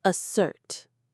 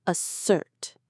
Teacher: The stress is on the second part. Assert. It sounds like the end of the word dessert, but with an a at the front.